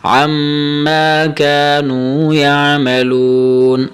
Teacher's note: یہاں پر وقف کیسے کرنا ہے، آپ نے نون کی یہ جو زبر پڑھی ہے یاد رکھیں، وقف کی صورت میں آپ نے زبر نہیں پڑھنا، نون کو ساکن کر دینا ہے